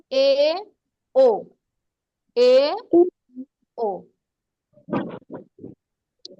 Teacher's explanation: এ আর ও যখন বলবা তখন দেখবে এটা হচ্ছে গিয়ে অর্ধ সংবৃত।